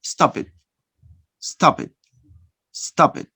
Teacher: you connect the final consonant pa with a starting vowel sound e. Stop it. This is linking.